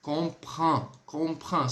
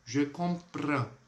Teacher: o R ele é bem rasgado, sempre muito rasgado no francês